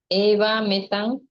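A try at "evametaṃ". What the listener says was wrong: It is actually one M. It is combined. Eva metang, not evang metang. Eva metang. Eva metang.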